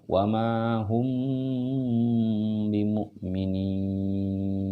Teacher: di tahan karena dia hukumnya adalah Ikhfa Syafawi Ikhfa Syafawi di ada dengung diantara dua bibir